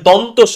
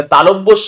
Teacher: দন্তস দাঁত থেকে উচ্চারণিত দন্তস এটা তালব্যস কারণ তালু থেকে উচ্চারিত